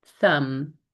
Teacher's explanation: we have our voiceless th silent b at the end. And then remembering if we're transcribing, if we write T-, that's the sound we're making.